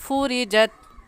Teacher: را کے نیچے زیر ہے، باریک کر کے پڑھیں گے